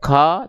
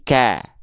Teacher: Rasakan tipiskan vokal a-nya ya